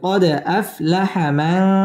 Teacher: দাল কলকলার হরফ এখানে ধাক্কা দিয়ে পড়তে হবে কলকলা করে পড়তে হবে